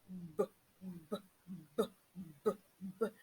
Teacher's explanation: In the articulation of this sound, when you touch your throat, you will discover that there is a vibration. There is a strong and thick vibration. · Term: voiced sound